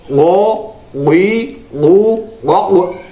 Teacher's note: pangkal lidah mengenai langit-langit yang di atasnya, dan ini makhrajnya waw